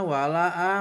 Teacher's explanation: mad jaiz karena ada huruf mad tabi'i bertemu dengan huruf hamzah dan lain kalimat, cara bacanya panjang seperti mad tabi'i 2 harokat atau 4 harokat